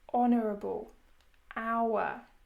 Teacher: in these words, the H is silent, meaning it is as if we are just saying the O, honourable, hour.